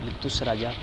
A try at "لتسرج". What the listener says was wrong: ہیں، لام کیوں چھڑ رہے ہیں؟